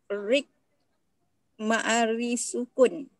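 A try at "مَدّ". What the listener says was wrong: Mana ada, pendek je. Mari sukun panjang. Mari sukun panjang ya. Bisharik pendek je. Tak ada mari sukun ya.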